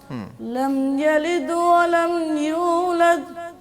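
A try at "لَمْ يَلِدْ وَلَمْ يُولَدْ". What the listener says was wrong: قلقلہ رہ گیا. لم یلد ولم یولد, یہ قلقلہ رہ گیا تھا, دوبارہ پڑھیے گا.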